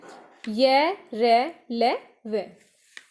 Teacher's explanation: जीभ मुख के किसी भी भाग का स्पर्श पूरी तरह से नहीं करती है